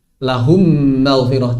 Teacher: Kemudian mimnya maghfirah dijadikan bertasydid. Maka dia dibaca lahu langsung ke mimnya maghfirah. · Maka sebetulnya mimnya lahum itu hilang. Secara lafaz mimnya lahum sudah hilang. Tidak diucapkan lagi. Kemudian mimnya maghfirah dijadikan bertasydid. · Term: idgham